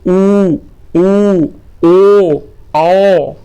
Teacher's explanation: वे स्वर जिनके उच्चारण में होठों की आकृति वृत्त के समान गोल हो जाती है वृत्ताकार स्वर कहलाते हैं